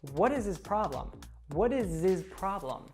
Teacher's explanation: becomes what is what is and then the s or actually that z sound from is connects to the pronoun